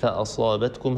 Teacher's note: هذه صاد مستعلية مفخمة وهي في أعلى مراتب التفخيم